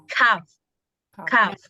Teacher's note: Makhraj huruf kaf itu dia bedanya sama qaf itu lebih maju sedikit di depan dari qaf.